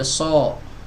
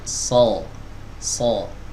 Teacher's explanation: tidak dimajuin bibirnya Tapi diangkat lidah bagian belakangnya Ini yang membedakan huruf Shad dengan huruf c dan huruf site